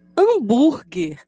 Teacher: o som das letras a m Ao serem faladas o ar passa pelo nariz e pela boca